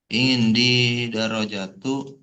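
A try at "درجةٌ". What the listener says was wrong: Baca tanwinnya dong. Indi darajatun.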